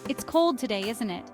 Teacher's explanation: My voice goes up again because I'm asking for confirmation.